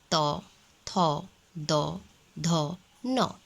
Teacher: इसका उच्चारण स्थान जिह्वा का पूरा स्पर्श दंत से होता है।